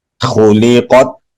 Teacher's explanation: تا پہ آواز بند کریں گے، اس پہ آواز جاری نہیں رکھیں گے، جاری رکھیں گے تو آواز بدل جائے گی، کی آواز پیدا ہوگی جس کا ہمیں خیال رکھنا ہے۔